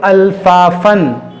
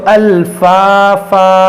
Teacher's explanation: الفا فن. دیکھیے آگے وقف ہے, وقف تام کی علامت ہے, تو جب یہاں وقف کریں گے تو دو زبر کو ہم الف سے بدل دیں گے الفافا. ملا کر پڑھیں گے تو الفافن, اور وقف کریں گے